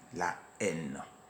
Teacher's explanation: en français, le H devant un mot, qu'il soit aspiré ou muet, ne se prononce pas